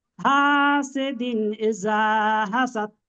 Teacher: তানবিনের আওয়াজকে বিনা গুণায় জাহির করে তাড়াতাড়ি পড়তে হয়, একে এজাহারে হালকি বলে।